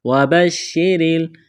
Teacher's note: شین کے اوپر تشدید ہے، شین میں سختی کریں گے، را کے نیچے زیر ہے، را کو باریک کرنا ہے